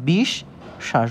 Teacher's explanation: দন্তস হচ্ছে তালব্যস এর মতন উচ্চারণ হচ্ছে